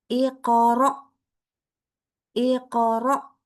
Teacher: Baca hamzah sukun itu tidak tadi kan bacanya tuh harus langsung berhenti. Kenapa? Karena langsung tutup pita suara.